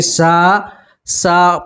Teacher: سین کے ساتھ الف مدہ ہے اس لیے آپ ایک الف کے برابر کھینچیں گے